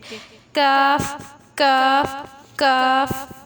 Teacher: یہ قاف کا مخرج سے تھوڑا سا منہ کی طرف ہٹ کے، کاف کاف کاف.